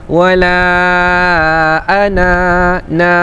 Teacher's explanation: Jadi ketika wakaf ana tu dibaca dengan 2 harakat.